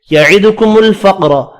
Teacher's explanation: قاف پر پڑھیں گے، ساکن ہے، قلقلہ بھی کرنا ہے